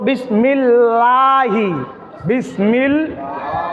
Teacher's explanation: আল্লাহ শব্দের পূর্বে যদি জের থাকে তাহলে আল্লাহ শব্দটাকে পাতলা করে পড়তে হয়